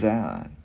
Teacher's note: Chữ D mình đưa lưỡi qua giữa hai răng, mình ép rung